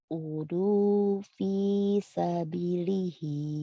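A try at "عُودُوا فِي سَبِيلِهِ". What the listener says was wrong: U-nya panjang dulu atuh. Udu fi sabili. Gitu atuh non.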